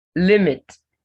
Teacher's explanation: It's stressed on its first syllable.